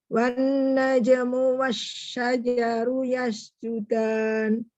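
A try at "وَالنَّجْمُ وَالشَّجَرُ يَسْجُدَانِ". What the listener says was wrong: Bacanya bagus. Nun tasydid kurang dengung. Nun tasydid yang di depan sekali malah. lupa itu ada wawunya. Wawunya putih warnanya.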